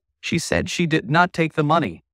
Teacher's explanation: You can hear that kind of creaky or shakiness in the voice.